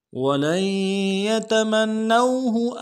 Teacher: ساتھ ملانا ہے، یا کے اوپر تشدید زور دیں گے، اور منو میں میم کو نون کے ساتھ ملانا ہے، نون کے اوپر تشدید زور دیں گے اور نون کو واو کے ساتھ ملائیں گے، واو لین ہے،